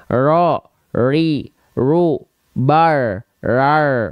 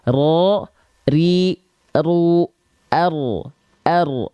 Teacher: tetap jelas getarannya ya bukan berarti getarannya hilang ya jadi dia punya sifat yang namanya adalah takrir lanjut lagi